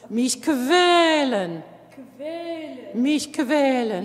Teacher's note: And I need to hear that kve voiced, that kve v.